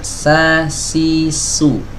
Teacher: Lidah belakangnya rileks, kemudian tidak ada penyempitan di bagian tenggorokan.